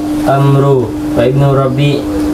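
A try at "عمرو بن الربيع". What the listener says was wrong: Enggak ada wa Amru ibnu Rabi'. Itu waw itu bukan waw ataf. Itu waw yang dicuri dari Daud. Nah, Amru itu telah mencuri wawnya Daud. Abu Dawud, kan baca panjang. Wawnya harusnya 2, diambil 1 oleh Amru.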